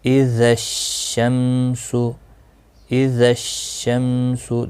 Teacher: ال نہیں پڑھا گیا، ڈائریکٹ شین پڑھا گیا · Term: حروف شمسی